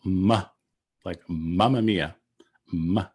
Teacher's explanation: the labial nasal ma like mamma mia ma right at the lips